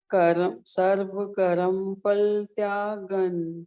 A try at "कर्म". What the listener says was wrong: नहीं, जैसे सर्व आप पढ़ रहे हो, सर्व, रा पूरा नहीं है,